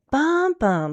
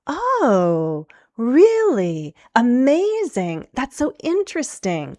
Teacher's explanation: you really want to practice this rise-fall intonation